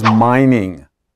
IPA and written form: ˈmaɪnɪŋ (mining)